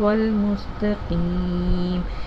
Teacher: اب یہاں پر صاد کو سین کی طرح نہیں پڑھنا، یہاں پر صاد پر پڑھنا ہے، اہدنا الصراط طا کی آواز الگ سے نکلے گی، اہدنا الصراط المستقیم۔ دیکھیں سین کی آواز سیٹی کی طرح نکلی